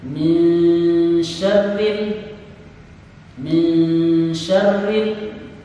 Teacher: Yang dinamakan dengan tawallud adalah membunyikan huruf secara berlebih yang bukan huruf qalqalah. Lam bukan huruf qalqalah, oleh karena itu tidak boleh ada pantulan di huruf lam.